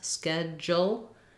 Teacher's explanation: we have first syllable stress schedule d u in this word says a j sound schedule